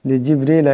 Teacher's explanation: এখানে বা সাকিন এটা কলকলার হরফ আওয়াজটা জটিল হয়ে উচ্চারণ হবে · সাকিন এটা কলকলার হরফ আওয়াজটাকে জটের হয়ে উচ্চারণ হবে লিজিবরিলা এখানে রা নিচে জের আছে আওয়াজটাকে পাতলা আওয়াজে পড়তে হবে